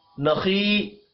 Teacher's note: खा हुरूफ मुस्तालिया है, पुर पढ़ा जाएगा। या मद्दा को एक अलिफ के बराबर खींच कर पढ़ेंगे।